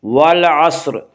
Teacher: اس کا قاعدہ یہ ہے، اس پر اگر پیش ہوگا تو اس را کو پر پڑھا جائے گا، اس کے نیچے اگر زیر ہوگا تو اس را کو باریک پڑھا جائے گا۔ تو یہاں را کے نیچے زیر ہے، اس لیے اس را کو یہاں پہ ہم باریک پڑھیں گے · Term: را مرامہ